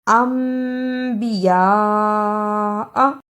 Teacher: نون ساکن کی آواز کو میم سے بدل کر پڑھنا ہے۔ الف زبر میم ام بازر بی، امبی، یا زبر بڑی مد یا، حمزہ زبر آ، انبیاء۔ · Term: اقلاب